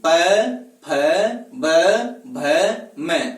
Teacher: ओष्ठ है ऊपर वाला और नीचे वाला दोनों ही एक दूसरे को स्पर्श करेंगे। फिर ध्वनि है वह उच्चारित होगी। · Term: ओष्ठ वर्ण